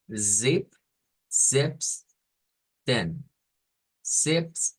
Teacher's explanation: no es como una s sino que es con una vibración al principio